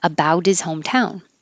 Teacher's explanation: About his changes to about is. So you don't really have to say the T, about, and then it changes to a D. Get rid of the H in his and connect it.